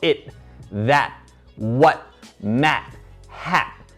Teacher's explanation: Todas estas palabras, aunque tienen una T al final, lo pronunciamos con el glottal stop